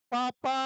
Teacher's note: पापा बोलते समय हमारे होठ दो बार आपस में लग रहे हैं। आपस में टकरा रहे हैं।